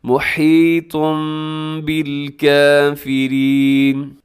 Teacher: پھر غور سے سنیے گا، من الصواعق، صواعق، حذر الموت واللہ محیط بالکافرین، لفظ اللہ کو اپنے موٹا پڑھنا ہے، اور محیطم پہ اقلاب ہو رہا ہے، تنوین کے بعد یہاں پر با ہے تو تنوین کو میم سے چینج کریں گے